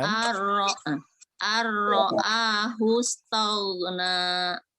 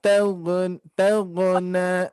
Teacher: ayat ke-7 hati-hati, Bu, huruf gha-nya tidak memantul, ya. Tidak memantul.